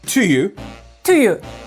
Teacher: The to and you get linked together.